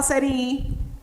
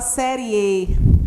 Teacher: A gente não fala série I, a gente fala série E. Né? Então, nós temos aqui uma semivogal e aqui nós temos uma vogal.